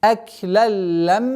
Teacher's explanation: После удвоения ляма с фатхи уходим на удвоенный мим и удерживаем назализацию в размере двух огласовок.